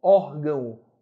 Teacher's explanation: Palavra paroxítona terminada no ditongo ei ou no ditongo ão são ditongos decrescentes, vogal mais semivogal. Nota que a letra O tem som de U.